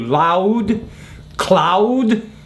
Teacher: you still hear the aou a little bit in there · Now we still have diphthongs in some words like OU, loud, cloud. You still hear the ow a little bit in there